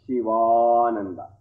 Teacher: Shiva, ending with A, and Ananda, beginning with A, vowel. So, you combine these two vowels, Shivananda. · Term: sandhi